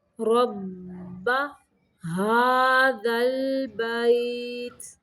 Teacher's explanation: را کو موٹا پڑھنا ہے اور با مشدد ہے، را کو با کے ساتھ تھوڑی دیر ملانا ہے